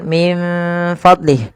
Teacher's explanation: Kita membacanya menyamarkan nunnya kepada huruf fa.